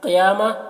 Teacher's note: قاف کو پر پڑھنا ہے، حروف مستعلیہ میں سے ہے۔ یا میں کھڑا زبر ہے جو الف مدہ کی طرح ہے۔